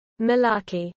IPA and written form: məˈlɑːki (malarkey)